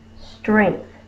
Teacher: my tongue is between my teeth and I'm blowing quiet air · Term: TH digraph